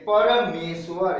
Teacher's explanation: परम जोर ईश्वर, परम में म के बाद अ है, अ के बाद दीर्घ ई है, अ और ई की संधि होगी तो ए का उच्चारण होगा